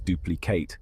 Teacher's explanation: a document you're creating a duplicate we pronounce it as duplicate with the stress on the first syllable